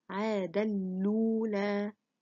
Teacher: أبو عمرو both الدوري and السوسي reads عاد نيل الأولى of سورة النجم with إضغام of the تنوين into the لام and the vowel of the همزة is transferred to the لام and dropping the همزة. So it is read عاد الأولى.